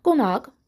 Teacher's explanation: sondakı q, x kimi tələffüz olunur, qonaq formasında.